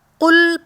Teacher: جو نقطوں والا قوف ہوتا ہے، موٹا پڑھا جاتا ہے، حرف مستعلیہ ہے، اور اس کو حلق کے اوپر والے حصے یعنی تالو سے ادا کرتے ہیں۔ اوپر کے حصے سے ادا کریں گے تو قل پڑھا جائے گا، لیکن اگر اسے کل پڑھ لیا، قل کل، ٹھیک ہے۔